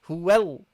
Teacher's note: So you connect huwa, the wa with the lam of lafzul jalala of Allah, the word Allah.